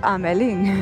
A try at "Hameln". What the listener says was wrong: Hamelin, en alemán se escribe sin la I. Hameln, ya seguro que se pronuncia más agresivo. Hameln.